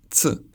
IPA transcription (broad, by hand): t͡s